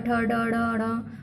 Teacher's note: टा वर्ग टा, ठा, डा, डा, डा, और ये मूर्धा का स्पर्श करते हैं।